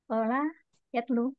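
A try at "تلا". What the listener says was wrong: ta, pakai ta, tala,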